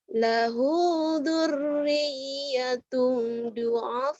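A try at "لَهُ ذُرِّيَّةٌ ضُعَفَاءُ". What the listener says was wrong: Sunda kamu dur-dur aja. Itu kan ada titiknya. Kurang rapuh dikit zalnya. Zal. Kalau orang Sunda kan a'udu. A'udu billah. Padahal a'udzu zal. Ya ada titiknya. Kalau dal nggak ada titiknya baru. Bukan lahudu.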